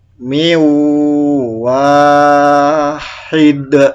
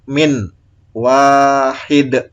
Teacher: Nun mati dan tanwin ini dimasukkan ke wawu dengan dengung, ya, ditekan dan ditahan selama 2 harokat. Misalnya ini ada nun mati bertemu wawu, ini dimasukkan suaranya nun ini ke wawu, ditekan, ditahan selama 2 harokat menjadi miu wahid.